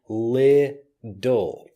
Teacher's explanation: the T becomes more of a D sound and it doesn't matter if you call this a flap T